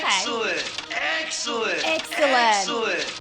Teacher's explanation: You can hear that in a clip here when they say excellent, that's a lowered dress vowel.